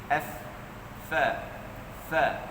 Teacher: Huruf fa ni sebut dia ialah pangkat kita punya bibir bawah, menyentuh kepala gigi atas. F. Dia bukan 2 bibir kan. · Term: makhraj fa